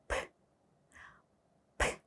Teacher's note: 거의 바람 빠지는 소리만 나죠.이 무성한 발음을 할 때는 떨림이 전혀 없습니다라고 말씀을 드렸습니다.